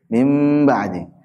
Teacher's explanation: mimnya disembunyiin ke ba gitu ada gunahnya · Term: iklab